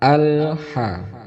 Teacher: Terkadang kita mengucapkan karena terburu-buru membaca atau terburu-buru melaksanakan sholat, ini menjadi qalqalah karena lam itu bukan termasuk huruf qalqalah. Cara baca yang benar adalah al-ha, tidak boleh memantul. Al-ha, kalau bisa lidahnya itu tidak ditekuk, lidahnya nempel di rahang atas atau gigi bagian dalam yang atas, itu tidak ditekuk.